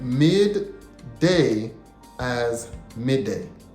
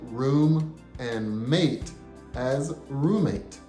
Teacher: when you hear those two sounds back to back you should say them together